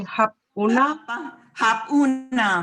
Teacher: A and U becomes U. It's like a formula. A plus U becomes U. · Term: vowel blending